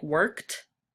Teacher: so it sounds like you're putting a T at the end instead of ED.